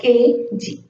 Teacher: tongue slightly raised towards the soft palate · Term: linguovelar